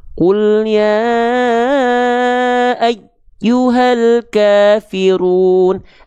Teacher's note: Tapi hati-hati sebagai wanti-wanti ketika kita melafalkan ya bertasydid, ketika dia dibaca nabar, jangan sampai ya bertasydidnya suaranya hilang.